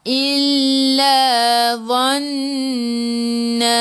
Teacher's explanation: Dhadhidu hujung lidah keluar sikit sahaja pada gigi depan.